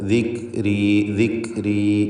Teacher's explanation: ദിക്, ദിക്രി, ദിക് എന്ന ശബ്ദത്തിന് ചലനം വരരുത്. എന്നാൽ തീരെ കേൾക്കാതെ ദിക്രി, ദിക്രി എന്നും പറയരുത്.